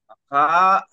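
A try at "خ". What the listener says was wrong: খা নয়, খ। কি বলবেন?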